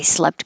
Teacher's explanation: has the vowel e as in head so your tongue is more flat the jaw is rather high